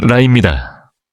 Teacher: 치하가 아닌 잇몸 뒤쪽에 혀를 대는 것이 중요해요. 혀끝이 입천장을 경쾌하게 튕겨 주는 느낌이면 아주 좋습니다.